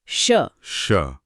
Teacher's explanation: जब आप तालव्य ध्वनि निकालते हैं, जैसे शलगम वाला श, तो आपकी जीभ तालु को छूती है। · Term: तालव्य श